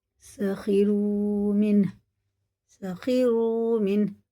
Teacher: نون ساکن کے بعد ہارا تو یہ اظہار کا قاعدہ ہے، اسے غنہ اخفا کرے بغیر ہی پڑھیں گے